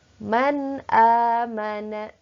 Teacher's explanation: nun sukun bertemu dengan alif, maka dibaca jelas nunnya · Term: izhar